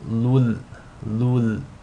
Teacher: So the rule is going to be idgham bila ghunna. You want to assimilate the tanween into the lam without any nasal sound. So it's as if the tanween is dropped and you're just saying lul, lul.